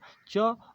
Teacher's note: च अघोष तालव्य और अल्पप्राण है